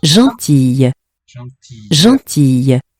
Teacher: 3 syllables. So we will hear that final E of the spelling after a double consonant, or after more than one. Whether it's the same one twice or a cluster of different consonants.